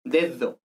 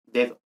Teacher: Mientras que en español, la D por ejemplo, la segunda D de dedo es una aproximante